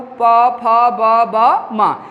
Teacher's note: यदि आपको सूत्र नहीं याद है तब भी आप इसको कह सकते हैं, यानी ओष्ठ यानी जब इन स्वरों या व्यंजनों को पढ़ेंगे, छोटा ऊ, बड़ा ऊ, पा, फा, बा, बा, मा, यानी इन व्यंजनों को पढ़ने से आपके दोनों जो ओठ हैं आपस में स्पर्श करते हैं। बिना स्पर्श किए आप इन व्यंजनों को नहीं बोल सकते हैं, इसलिए इसका नाम रखा गया ओष्ठ से उच्चारित होने वाले वर्ण।